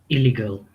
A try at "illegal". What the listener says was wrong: You pronounce double. Illegal. No, basically it's illegal. One L should be removed. when you're pronouncing.